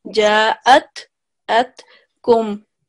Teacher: we will differentiate between hamza and ayn. We will not do the ayn sound